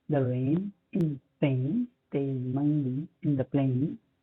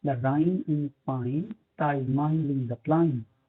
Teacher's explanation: मिसाल के तौर पर कॉकनी एक्सेंट इंग्लैंड में बोला जाता है। कॉकनी ए साउंड नहीं बोल सकते, ए को आई से बदल देते हैं।